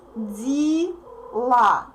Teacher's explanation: Unstressed E represents И.